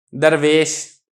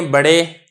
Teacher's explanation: میں فتح پڑھ رہا ہوں لیکن اس میں جو میلان ہے یا کی طرف وہ کم ہے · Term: امالہ صغریٰ